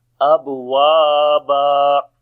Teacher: So if we say fakanat nat abwaba, on the ba we make qalqala. Waw we long due to alif madda, and when we stop so it will be alif madda as well.